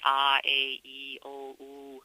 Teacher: The Black African dialect has very pure vowels in general.